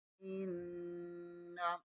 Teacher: हमज़ा ज़ेर को नून के साथ मिलाएंगे, नून में शद्दत है, यहाँ पर गुन्ना लाज़मी होगा।